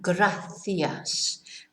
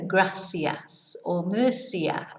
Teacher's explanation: So you will hear it pronounced not lisped, but more like an S.